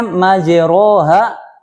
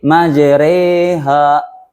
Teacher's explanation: asalnya majroha dimiringkan suara mengarah ke majreha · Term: imalah kubroh